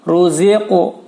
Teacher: Ruziqu, bukan ruzik, karena huruf qaf ketika berharakat sukun atau ketika menjadi qalqalah bunyinya arahnya menjadi o